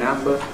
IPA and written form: ˈæmbə (amber)